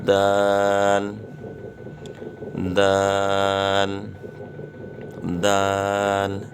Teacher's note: زبان کی نوک جب اوپر کے اگلے دونوں دانتوں کی جڑ کی طرف والے آدھے حصے سے لگے تو یہ حرف پڑھا جائے گا